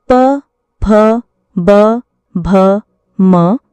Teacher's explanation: प वर्ग के सभी वर्ण प, फ, ब, भ, म ओष्ठ्य व्यंजन कहलाते हैं। ओष्ठ्य व्यंजन वे होते हैं जिनका उच्चारण दोनों ओंठों के स्पर्श या निकट आने से होता है। इनके उच्चारण में ओंठों की प्रमुख भूमिका होती है।